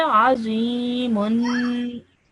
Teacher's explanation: just make sure that you stretch that nasal sound at the end for 2 seconds